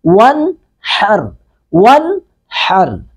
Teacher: ساکن پہ قلقلہ کریں گے، ون حر، واو زبر نون ون، نون ساکن کے بعد ہا، ہا حروف اظہار میں سے ہے، تو یہاں پہ نون کو بالکل ظاہر کریں گے